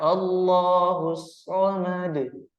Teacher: tidak boleh kita ee seolah-olah menambah Hamzah sukun di belakangnya